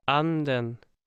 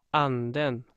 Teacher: The crucial distinction between accent one and accent two is the position of the word accent fall. In accent one, the word accent fall starts before the word, and in accent two words, the word accent fall starts at the beginning of the accent two word. So it's a timing difference between these two accents.